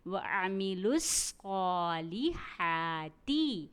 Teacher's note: صاد کو ہمیں موٹا بھی ادا کرنا ہے اور سیٹی اور سختی سے بھی ادا کرنا ہے ، اور اسے ایک الف کے برابر بھی پڑھنا ہے، یعنی · ہا کے اوپر کھڑا زبر ہے، اس لیے ہمیں اسے ایک الف کے برابر پڑھیں گے۔